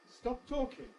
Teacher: we've got two successive closes one at the end of the first word one at the beginning of the second word